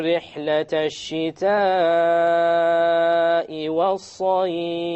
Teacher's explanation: It is a mad al-muttasil, a connected mad. So I have to do it 4 or 5. I have no choice of making it small to 2 harakas.